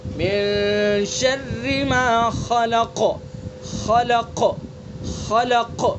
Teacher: من شر ما خلق، خا کو پر کریں گے چونکہ حروف مستعلیہ میں سے اور قاف کو بھی پر کریں گے چونکہ حروف مستعلیہ میں سے اور اس کے اندر قلقلہ بھی کریں گے